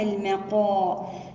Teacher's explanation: الم، الميم هنا مرققة. المقا، القاف مفخمة من الدرجة الأولى لأنها مفتوحة وبعدها حرف مد